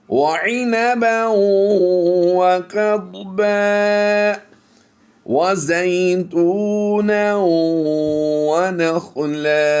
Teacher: دو زبر کی تنوین کو ہم الف مدہ سے کنورٹ کرتے ہوئے لمبا کر کے وقف کریں گے